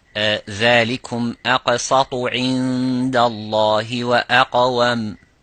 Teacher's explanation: the qaf, is a heavy or full mouth, similarly the ta